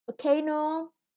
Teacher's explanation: Volcano, the stress is on the second syllable.